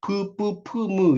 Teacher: 이런 건 양입술에서 터지는 소리죠